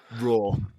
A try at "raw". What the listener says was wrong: Dude, why'd you have to roll the R?